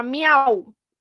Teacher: En este caso, el triptongo, como el inicio de su nombre lo indica, corresponde a encontrar tres vocales en un solo golpe de voz, como en la palabra miau. Miau contiene una vocal cerrada, una vocal abierta y una vocal cerrada.